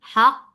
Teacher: Ha from your throat with hams for fatha open jaws attached with qaf. First qaf will get sifa of shidda very clear. The makhraj will be cut off very nicely.